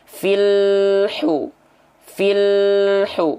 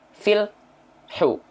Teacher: terus mengalir sedikit ya filu filhu bukan fil hu Nah jadi tidak boleh ada jeda di apa di antara bunyi lam sukun dengan huruf berikutnya